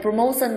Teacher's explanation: Ý B có đuôi son, đuôi son làm trọng âm rơi vào trước son, vậy promotion sẽ rơi vào âm thứ 2